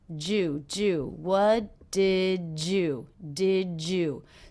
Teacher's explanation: So the D and the Y here are combining to make the J sound.